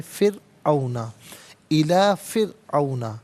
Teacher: الی فرعون، فرعون میں را ساکن ہے، ما قبل فا کے نیچے زیر ہے، را ساکن ہو ما قبل جو ہے وہ حرف کے نیچے زیر ہو تو را ساکن کو باریک کر کے پڑھا جاتا ہے